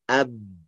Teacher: Dari antara bibir atas dan bawah. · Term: huruf ba